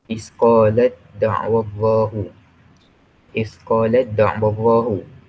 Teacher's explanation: Jadi ta yang huruf pertama itu berbaris sukun. Kemudian bertemu pula dengan huruf dal yang berbaris fathah. Kemudian dal itu kita masukkan kepada huruf ta tersebut. Sebabnya makhrajnya hampir sama. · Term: idgham mutajanisain